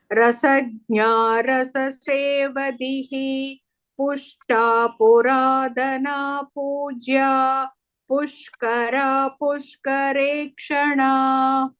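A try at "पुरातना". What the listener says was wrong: In Puratana, that is ta. Maybe sometimes because of the regional influence, we tend to pronounce it slightly as, it is heard as da. It is ta. Puratana.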